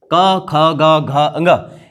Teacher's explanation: क, ख, ग, घ, ङ, इन सभी का उच्चारण स्थान होता है कंठ, इसीलिए इनको कंठ व्यंजन कहते हैं।